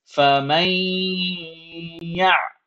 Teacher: I'm holding that noon sound in my nose, and that is idgham bighunna, and it's the same thing here.